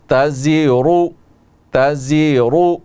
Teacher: را کے اوپر پیش ہے اور را کو ہم موٹا کر کے پڑھیں گے، فل ماؤتھ کے ساتھ پڑھیں گے